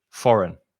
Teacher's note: the first vowel sound is o and the second vowel sound is uh